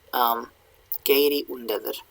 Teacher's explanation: when there used to be a W before a U or an O, that W goes away because there's already a back vowel there, a back rounded vowel. So they're just like, we're fine without the W.